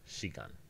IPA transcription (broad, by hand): ʃigan